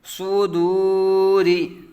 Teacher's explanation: را کے نیچے زیر را باریک پر آ جائے گا